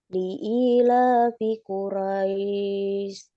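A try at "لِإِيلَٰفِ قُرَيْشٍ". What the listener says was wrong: Ro-nya lebih tebal ya. Ro. Bukan ra tapi ro.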